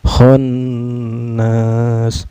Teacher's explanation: dihukumi ghunnah ya karena Nun yang bertasydid cara bacanya di didengungkan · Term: gunnah